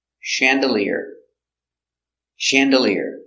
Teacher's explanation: Accent on the first syllable. Soft sound.